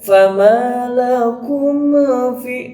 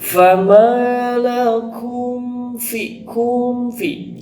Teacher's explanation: hati-hati mimnya itu tidak boleh ada pantulan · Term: idhar syafawi